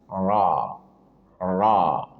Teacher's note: Kan ra ujung lidah bertemu dengan gusi dua gigi seri atas.